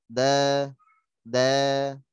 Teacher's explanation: Jadi suaranya menebal. Suaranya kok bisa kayak mirip O gitu ya. Itu karena pangkal lidahnya menaik. Dan sebagian besar lidahnya menaik.